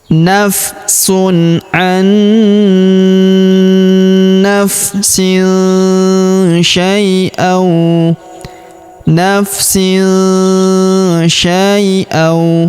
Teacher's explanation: Kemudian tanwin in huruf sin bertemu huruf sya, maka tanwin innya melebur ke huruf sya, kita baca dengung dan samar. Dengungnya kita tahan 2-3 harokat.